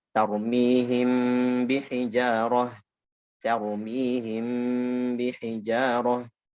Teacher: Karena dia nanti sesama huruf bibir. Mim huruf bibir, mim ba ketemu huruf bibir, sesama huruf bibir ketemu lalu dibaca yang samar-samar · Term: ikhfa syafawi